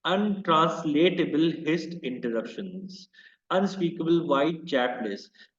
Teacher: listen to the intense sibilants and L consonants of the poem's refrain